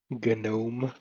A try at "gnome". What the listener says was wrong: gnome, the G's not silent.